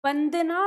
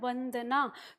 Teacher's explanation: है ऊपर के दांत के नीचे जब हम बोलते हैं व जब हम व कहते हैं तो हमारे होट आपस में लगते नहीं है